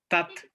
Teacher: ada udara yang keluar ketika kita mengucapkan huruf-huruf yang bersukun yang memiliki sifat hamas, memiliki sifat udara keluar gitu ya. Jadi dia bukan berubah menjadi huruf C, terutama huruf ta ya Bapak Ibu ya.